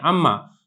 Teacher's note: جو یہاں پہ صفت غنہ ہے وہ نون کی صفت نہیں ہے بلکہ وہ اصل میں میم کی صفت ہے غنہ کی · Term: ادغام تام